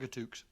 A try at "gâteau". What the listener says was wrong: I mean, I don't mean to make you look like an idiot or anything, but I think you'll find it's gâteau. Yeah, the X is silent. Gâteau. That's right.